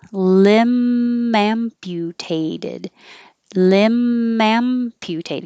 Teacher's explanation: it by itself lim if there was a vowel after it now the b disappears and it's the m that connects